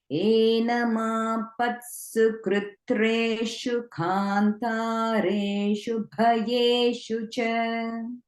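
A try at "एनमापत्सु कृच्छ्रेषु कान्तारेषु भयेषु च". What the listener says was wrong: You can just work a little bit on enunciating the bha in bhayeshu.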